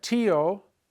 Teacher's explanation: To break up the diphthong, remember, a diphthong are two vowels together making one sound. When you put an accent mark on the I, you break up the diphthong, and now you have two separate sounds.